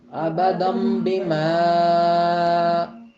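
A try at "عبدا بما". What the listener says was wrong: عبدم بما کیا فرق تھا کہ بیما جو ہے اس کی آواز بیما کی بجائے بیما ہو گئی، یعنی ناک میں نون کا غنہ کر دیا آپ نے.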